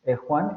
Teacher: la G de Juan. Juan, esa es esta fricativa, velar fricativa sorda.